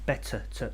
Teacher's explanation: It's not aspirated, because when we say a T, better, you can feel the air coming out, better. But better, it's not coming out.